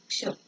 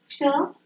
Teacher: क्ष, क्ष बोलते समय हमारे मुंह से अ का भी उच्चारण हो रहा है। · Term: संयुक्त व्यंजन